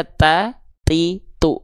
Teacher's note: huruf t-nya di sini kita baca ta ti tu keluar dengan percikan nafas · Ketika ujung lidahnya nempel ke pangkal gigi seri atas, dia tertahan suaranya. Ketika lepas, dia keluar percikan nafas. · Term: huruf ta